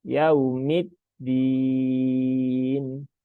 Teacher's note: Yaumi, ya, seperti itu. Dan bunyinya domah ya, bukan o ya, bukan yao. Ini juga sering terdengar yaumi, tapi yau ya, yaumid din.